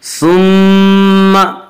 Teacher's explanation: मीम मुशद्दद गुन्ना होगा, एक अलिफ की बक़द्र गुन्ना करेंगे